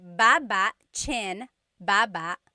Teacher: Emphasis is on the first syllable, baba.